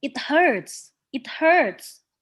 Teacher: So you put the stress on the word hurts instead of the it.